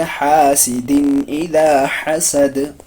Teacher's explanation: دال پہ آیت کریں گے، جزم دیں گے، دال کو قلقلہ ہو جائے گا · حروف حلقی کا حمزہ آ رہا ہے، اس لیے اس کو ہم یہاں پر اس میں ہم اظہار کریں گے